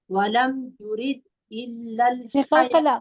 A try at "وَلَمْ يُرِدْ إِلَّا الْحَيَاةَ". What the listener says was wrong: قلقلہ تو کریں گے نا. ولم یرید الا